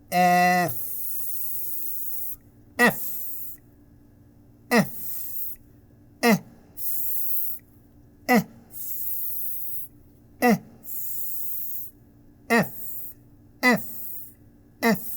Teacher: Now you notice how my teeth touch my lower lip.